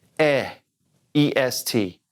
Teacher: we don't say the T at the end